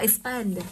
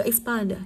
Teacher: Trọng âm rơi vào âm tiết thứ hai.